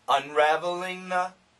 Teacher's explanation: the faster we say this, the NG can cancel the TH and it sounds like na.